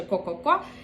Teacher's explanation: к - це є задньо горловий звук і язичок наш ховається фактично аж туди далеко вглиб порожнини рота